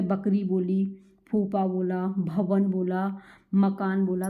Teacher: उच्चारण दोनों होठों के स्पर्श से होता है, इसलिए इसका नाम क्या है, ओष्ठ है।